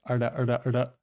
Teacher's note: I think they do more like a retroflex R, by which I mean that the tongue is kind of rolled back in the mouth